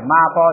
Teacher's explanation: 马包就把马延长一点也可以